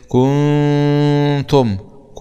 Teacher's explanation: طيب زد في تق ضع ظالم يبقى عندنا هنا حكم اخفاء انا عندما ابالغ في ضم الكاف يتولد معي واو ماديه